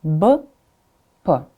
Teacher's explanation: B, you see, lips right here, b, and p. The where, like the place of articulation is the same, but the quality, the voice, like the measure of voice is different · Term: voiced and voiceless consonants